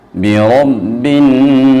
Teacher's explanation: ہم با کو سختی کے ساتھ پڑھیں گے کیونکہ با مشدد ہے۔